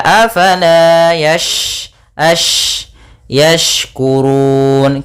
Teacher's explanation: huruf syin ada sifat tafasi yaitu intisyarusuti fil fam yaitu menyebarnya suara di dalam mulut itu banyak lebih banyak dibandingkan yang kita keluarkan maka Afala Yas